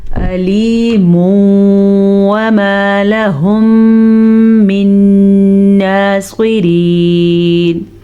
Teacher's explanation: تنوین کے بعد یمون آیا, یمون میں سے واو آیا ہوا ہے, اس لیے ہم ان دونوں کو آپس میں ملائیں گے اور غنے کے ساتھ پڑھیں گے · پھر سے غنہ, میم ساکن کے بعد دوبارہ میم آیا ہوا ہے تو ادغام شفوی کا قاعدہ ہے. پھر سے غنہ, نون ساکن کے بعد نون آیا ہے جو کہ یمون میں سے ہے, ادغام بالغنہ کا غنہ